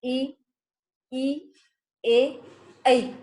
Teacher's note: जब हम ये अग्र स्वर का उच्चारण करते हैं तो हमारी जीवा का अगला भाग सक्रिय होता है